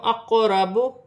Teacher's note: قاف حروف قلقلہ میں سے ساکن ہے، قلقلہ کے ساتھ ادا کیا جائے گا. را پر زبر کی حرکت ہے، را موٹی پڑھی جائے گی.